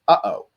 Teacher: we have a glottal stop in English which is uh oh and it's that uh at the end